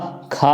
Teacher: स्पर्श व्यंजन कंठ ध्वनि अघोष महाप्राण ध्वनि है